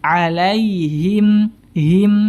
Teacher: karena tidak menyempurnakan harakat kasrah harusnya disempurnakan ya dengan menurunkan rahang bawah